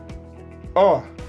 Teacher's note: La N no se pronuncia, sino que la A tiene una salida nasal.